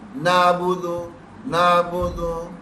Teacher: عین کی آواز درمیان حلق سے